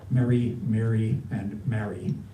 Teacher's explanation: Those three words, Mary, Mary, Mary, they're all pronounced the same to me